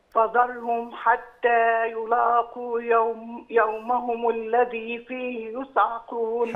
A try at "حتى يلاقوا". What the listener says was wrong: حتى يلاقوا، رقق اللام شوية. يلا لا.